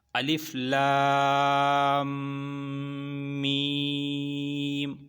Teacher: پچھلا لفظ اگلے کے ساتھ ملانا ہے، اور اس میں غنہ آئے گا